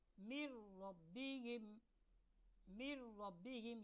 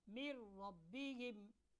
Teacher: نون ساکن یا نون تنوین کو ہم نے را کے ساتھ ملا دینا ہے، لیکن ایسے ملانا ہے کہ غنہ نہیں ہوگا، ٹھیک ہے؟ مر ربہم، مر ربہم، یہاں پر نون کی جو آواز ہے وہ ختم ہو جائے گی، مر ربہم۔